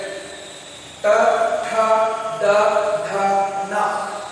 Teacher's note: ನಾಲಿಗೆಯನ್ನ ಮೇಲಕ್ಕೆ ಟಚ್ ಮಾಡಿದ್ರೆ ಏನ್ ಭಾಗ ಇದನ್ನ ಅಂಗಳು ಅಂತ ಕರೀತೀವಿ. ಈ 5 ಅಕ್ಷರಗಳು ಅಂಗಳಿಗೆ ನಾಲಿಗೆ ಸ್ಪರ್ಶವಾಗುವ ಮೂಲಕ ಉಚ್ಚಾರಣೆ ಆಗುತ್ತವೆ. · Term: ಮೂರ್ಧ